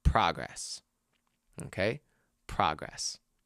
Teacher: So it's a noun. And if it's a noun, we have to put the stress on the first syllable.